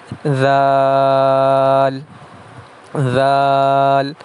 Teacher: زبان کی نوک جب اوپر والے دانتوں کے سرے سے لگے تو اس سے ذال جو ہے وہ ادا ہوتا ہے، زبان تھوڑی سی اس میں باہر نکل آتی ہے